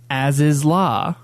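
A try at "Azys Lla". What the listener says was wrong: But you say it faster.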